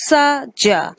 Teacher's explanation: these sounds are called alveolar because the tongue touches the alveolar ridge